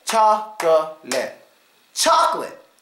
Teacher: Because that syllable in the middle is not stressed much at all, we give it the schwa. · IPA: ə